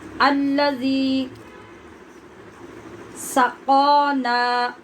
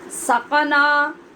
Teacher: قاف کو ایک تو موٹا پڑھنا ہے، دوسرے قاف کے بعد اور نون کے بعد الف ہیں، دونوں کو ہم لمبا کریں گے۔ سقنا نہیں، غلط، اور سقانا یہ بھی غلط، دونوں کو برابر ہم نے لمبا کرنا ہے۔